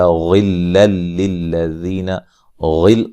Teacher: غین کو موٹا ادا کریں گے، یہاں نون تنوین کا ادغام ہے لیکن بلا غنہ ہے، غنہ نہیں کریں گے۔